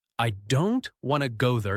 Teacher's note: Now the smaller words like I to and there are said more softly or quickly.